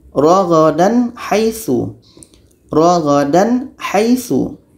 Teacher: Tak ada dengung dan harus jelas dua-duanya. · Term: izhar halqi